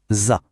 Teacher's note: le bout de la langue vient se poser tout doucement derrière les dents du haut